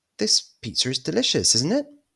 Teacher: raising the intonation to try and get a response